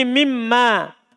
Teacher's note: Kalau ada nun sukun ketemu mim idgham. Nunnya berubah menjadi mim.